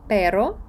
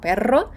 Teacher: якщо стоїть подвійна р ми її розтягуємо І кажемо Перро А якщо вона одна тоді це вже буде